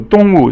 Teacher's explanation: 动 物 is 四 声 falling